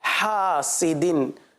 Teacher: دال کے نیچے دو زیر کی تنوین ہے، غنہ نہیں کریں گے، اذا حسد ہا کو واضح کریں گے اور دال پر قلقلہ کریں گے۔